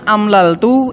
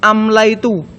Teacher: Pertama, dalam mudhaaf fi'il, ibdal atau substitusi sering terjadi. Misalnya, amlaltu diubah menjadi amlaitu. Lam digantikan oleh ya. Alasannya adalah daflan lil-tsiqol.